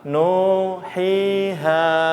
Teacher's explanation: Nun dhammah bukan sukun tadi, saya salah. Nun dhammah ketemu wawu sukun jadi panjang nu